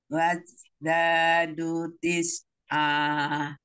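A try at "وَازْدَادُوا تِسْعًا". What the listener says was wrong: mati zainya alir karena dia sofir ya punya z gitu ya. Kalau itu waj. Umi z z bisa coba z. Z zebra. Zebra. Zebra. Nah, zigzag. Nah, kayak gitu ya. Z. Wazadu.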